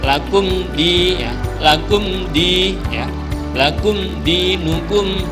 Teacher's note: Mim sukun bertemu dengan huruf dal itu namanya idhar syafawi ya. Idhar syafawi itu artinya dibaca jelas dengan mulut terkatup ya.